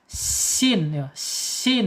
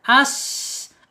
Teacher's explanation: Aliran udaranya mengalir tuh sin karena sifatnya hamas ya. As gitu. Mengalir.